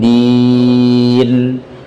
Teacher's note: Din, akhiri dengan nun. Din, jangan dibaca dengan gunnah.